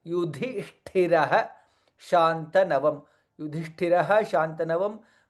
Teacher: Visarga joins with Shakara, hence additional Shakara comes here.